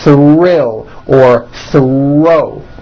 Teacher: the R is the strongest sound of the blend and is louder than the TH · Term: THR blends